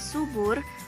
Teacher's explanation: Akan tetapi pada kata subur, fonem U diucapkan sebagai O. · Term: alofon